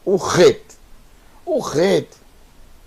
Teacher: o som é um som gutural é um som na garganta